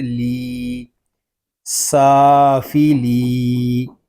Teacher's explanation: یہاں لام کو ہم ایک الف تک کھینچ کر پڑھیں گے کیونکہ یہاں یا مدہ ہو رہا ہے